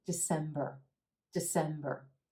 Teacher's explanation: The first syllable is a schwa super quick